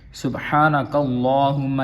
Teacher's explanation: میم پہ شد ہے، یہاں پہ غنہ ہوگا